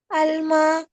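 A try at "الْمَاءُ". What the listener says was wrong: पूरा पढ़े ना। एंड में उसके क्या आएगा? 2 पेश आएंगी या 1 पेश आएगी? तो फिर कैसे पढ़ेंगे उसको? अलमाऊ, ये आपने खुद से लगानी है, उन्होंने नहीं लगाई हुई। यही चीज उन्होंने चेक करनी है कि आप लगाते हैं तो क्या लगाते हैं।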